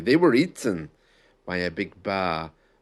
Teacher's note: My voice got louder. I used up more breath. And that's how we add emphasis.